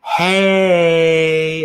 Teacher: we can have a word like hey, and we can drag out that long a sound